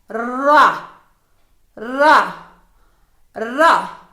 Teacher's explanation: இது நுனிநாக்கு மற்றும் மேல்நடு பற்களின் வேரிலிருந்தும் உச்சரிக்கப்படுகிறது